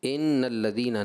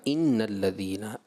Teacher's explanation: کسرہ مجھے ایسے محسوس ہوا کہ آپ نے مائل بمجہول کر دیا اس کو